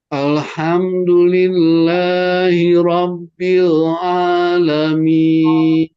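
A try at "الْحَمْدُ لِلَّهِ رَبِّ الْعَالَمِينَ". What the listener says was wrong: Masih kurang tawasud di al. Ya. Jadi harus tawasud. Harus bainiyah. Paling enggak harus satu harokat. Tidak boleh lebih. Tidak boleh kurang. Al. Al. Satu ketukan. Alhamdulillah. Ditahan. Jadi tidak dibaca.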